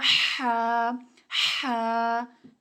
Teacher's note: हलक के दरमियान से निकलेगा · اب اس کے آگے الف ہے نا، بریکٹ میں دیکھیں الف لکھا ہوا ہے، تو اس کو جسٹ ایک الف جتنا لمبا کرنا ہے کہ اپنے آپ نے مٹھی بند کرنی ہے، نہ ذرا تیزی سے اور نہ ہی زیادہ آرام سے کھولنا ہے، تو بنے گا ح ح، ٹھیک ہے؟